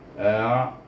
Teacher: hamzah baris atas digabungkan dengan ain, itu sebab bunyinya daripada pangkal halqum kepada tengah halqum